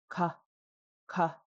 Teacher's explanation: It is mid aspiration, ka. So we get a little flutter. Not no flutter, not big flutter. And because it's Baby Bear, who's short, it's low tone.